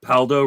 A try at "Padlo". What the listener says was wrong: I mean, you didn't even say his name right. It's Kevin Padlo. You said Paldo.